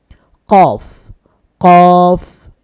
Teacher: কফ হরফটি জিহ্বার গোড়া দিয়ে উচ্চারণ করতে হয় জিহ্বার গোড়া তার বরাবর উপরে তালুর সাথে লাগবে